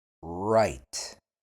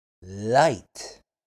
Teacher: For R, the tongue does not touch your teeth. For L, the tongue touches your teeth.